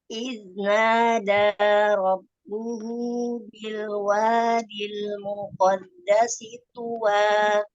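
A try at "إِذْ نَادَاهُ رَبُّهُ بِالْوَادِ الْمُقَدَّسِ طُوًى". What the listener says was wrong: Afwan, dhammahnya tertinggal. Nadahu rabbuhu.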